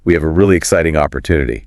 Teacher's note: you might lift the pitch slightly to signal enthusiasm or introduce something new